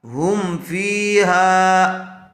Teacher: غنّے کے ساتھ نہیں پڑھیں گے بلکہ میم کو ظاہر کر کے پڑھیں گے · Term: اظہار شفوی